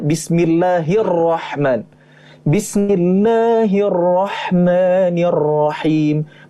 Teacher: huruf RO nya di double kan sehingga dimasukkan ke dalam kata sebelumnya